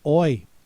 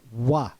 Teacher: In English, we pronounce this oi. In French, it's pronounced wa